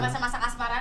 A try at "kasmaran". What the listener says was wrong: Bukan kasman ya, kasmaran ya.